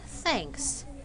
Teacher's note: the word thanks has voiceless th